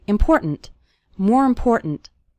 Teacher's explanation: The word more kind of runs into the word important, and the last syllable of important kind of gets reduced.